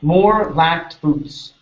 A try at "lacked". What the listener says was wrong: give me a T sound.